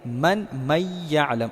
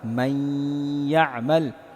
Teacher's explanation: ادغام کا مطلب یہ ہے کہ اس نون کو ہم یا میں مدغم کریں گے، داخل کریں گے، اور ایسے پڑھیں گے جیسے یہاں نون بالکل سائلنٹ ہے۔ فار ایگزامپل اصل ہے من یعلم، تو ہم نون کو یا میں مدغم کریں گے، داخل کریں گے، اور پھر ایسے پڑھیں گے من یعلم، اور پھر غنہ بھی ساتھ میں کریں گے، تو ایسا ہوگا من یعمل۔